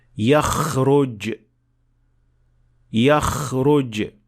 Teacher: آخر میں خا کے ساتھ ایک غلطی سے بچنا چاہیے، اور وہ ہے خا کی آواز کو خراٹے جیسی آواز سے ملانا. خراٹے کی آواز اس جگہ سے پیدا ہوتی ہے جو حلق کی بجائے منہ کے کھلنے والے حصے کے بہت قریب ہوتی ہے